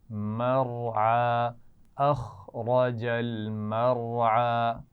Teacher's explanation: اخرج خا اور را دونوں موٹے پڑھے جائیں گے. مرعى، اس میں را کو موٹا پڑھنا ہے اور اس کے بعد عین آ رہا ہے تو بہت توجہ سے دھیان سے اس کو پڑھنا ہے، عین کے مخرج کو واضح کرتے ہوئے